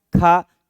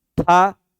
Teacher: मुख से अधिक वायु का उत्सर्जन होता है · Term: महाप्राण